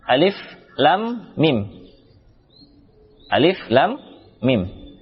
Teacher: dibaca alif saja, tidak ada panjang. Kemudian la 6 harakat, panjangkan la, bertemu huruf mim.